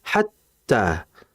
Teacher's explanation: Tak di situ ada tasdid. Jangan kita memanjangkan hatta.